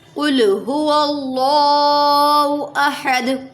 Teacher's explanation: هو اللہ پہ اللہ کے نام سے پہلے زبر ہے تو پر پڑھا، کل کو اس لیے پر پڑھیں گے کیونکہ قل قوف حرف مستعلیہ میں سے ہے، اس لیے قوف پر پیش ہوگا تو قوف کو پر پڑھیں گے، قوف پہ پیش نہیں ہوگا تو بھی قوف کو پر ہی پڑھیں گے، موٹا والا قوف ہے